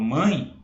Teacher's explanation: ou seja um som mais forte mãe quando eu falo mãe o ã é mais forte e o e é mais fraco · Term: semivogal